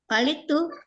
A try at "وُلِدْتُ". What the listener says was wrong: Wulid. Ini dhammah awalnya. Dhammah awalnya. Majhul. Dari walada. Walada menjadi wulida.